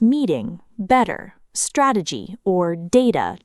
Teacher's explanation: The flap T is the soft D-like sound you hear in words like meeting, better, strategy, or data during fast American speech. Instead of a hard T, the tongue quickly taps behind the teeth.